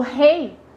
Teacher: Quando eu falo rei, eu fico muito mais no E do que no I. Então tem uma vogal E e e uma semivogal, vou até fazer aqui menor, ó, uma semivogal I. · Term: decrescente